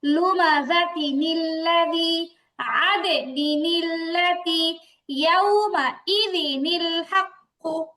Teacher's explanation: তাই কানেকশন করার সুবিধার জন্য কি করা হয়, ওই সময় তানবিনটারে ভেঙে তানবিনের মধ্যে যে নুনটা আছে ওই নুনটাকে প্রকাশ করতে হয়, আর নুনটারে জের দিয়ে পরেরটার সাথে মিলায় পড়তে হয়